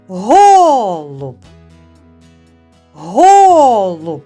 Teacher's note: більше чутно звук о перший голосний і є наголошеним над ним ставимо наголос дуже добре любі діти Ми сьогодні вивчали